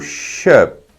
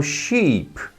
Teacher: Eu prolongo a letra I. Ou seja, o encontro vocálico de duas vogais ficou mais forte do que uma vogal sozinha.